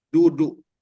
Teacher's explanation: kalau kita orang Indonesia mengucapkan kalimat duduk maka ujung lidah kita menyentuh bagian daging